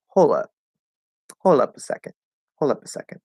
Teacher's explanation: And so this is a special case in this word or phrasal verb, hold up, where we could actually drop the D, and that does sound a little more informal